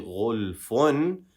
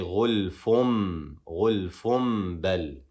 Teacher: Here we have the example of the dhamma where the second one is a meme, letting us know that the noon sakin in the tanween is going to be replaced by a meme.